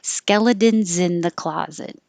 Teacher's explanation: it's spelled with an S, but it sounds like a Z, so I put a Z here.